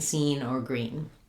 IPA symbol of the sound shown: iː